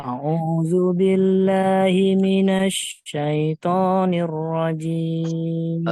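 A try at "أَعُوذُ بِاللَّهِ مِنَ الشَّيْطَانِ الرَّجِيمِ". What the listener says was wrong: Shinnya kurang ini Pak. A'udzu billahi minasya. Sanya Pak, diulang.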